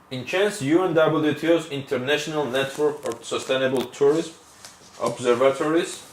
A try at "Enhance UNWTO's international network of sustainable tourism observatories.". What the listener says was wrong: Okay, you're splitting your chunks again. Observatories.